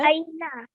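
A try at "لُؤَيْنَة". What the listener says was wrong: Beautiful. Very good.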